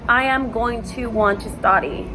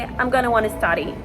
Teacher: So the going to and the want to is gonna wanna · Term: linkage of words